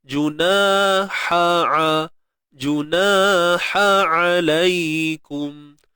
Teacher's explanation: Baik, huruf ha dengan ain ini tuan-tuan perempuan datangnya memang daripada tengah kerongkong kita, makhraj kerongkong lah, halqiyah.